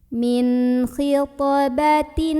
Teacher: Karena ada huruf qalqalah yaitu ta yang sukunnya itu sukun asli dan berada di tengah-tengah bacaan. Maka cara membunyikan huruf to-nya ini dibunyikan dengan memantul, pantulannya kecil aja. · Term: qalqalah sughra